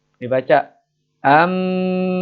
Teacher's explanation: membalik suara N menjadi suara mim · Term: iqlab